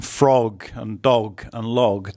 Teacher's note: The hard G sound in frog and dog and log doesn't exist in Thai.